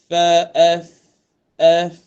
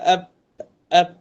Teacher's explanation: Huruf fa ni keluar dia dekat perut bibir.